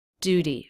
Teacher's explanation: Duty, flap T.